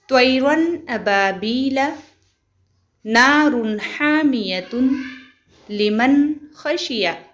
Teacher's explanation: تنوین یا نون ساکن کے بعد حروف حلقی آئے تو نون کو ظاہر کر کے بلا غنہ کے جلد پڑھیں گے، اس کو اظہار کہتے ہیں۔